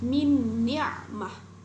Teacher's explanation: Huruf nun mati di sini bertemu dengan nun. Jadi dibaca seperti bertasydid.